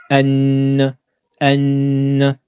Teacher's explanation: au niveau du nez donc elle a deux points de prononciation la langue qui va monter vers le début du palais et ce son qui va sortir au niveau du nez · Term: Runna